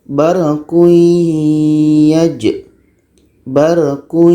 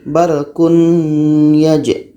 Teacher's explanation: Bunyi tanwin ini masuk kepada bunyi ya secara dengung. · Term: idgham